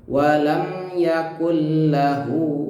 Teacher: Idgham bila gunah, masuk tanpa dengung ya. Jadi bacaannya bukan yakun lagi setelah bertemu lam.